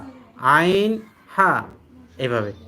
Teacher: দুই নম্বর হলকের মধ্যখান হতে উচ্চারিত হয় আইন হা